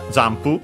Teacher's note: notice the n, which actually becomes m because of the following p, pu in this particular case.